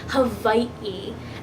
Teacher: H AWA I and a very funny looking backwards apostrophe I that backwards apostrophe is called an O kina and the best way I could describe it is a glottal stop